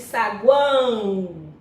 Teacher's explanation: Quando você pronuncia a palavra saguão, no final da palavra você não diz saguão, você diz saguão. Então, o O aqui está com som de U, por isso que ele é considerado uma semivogal na palavra saguão.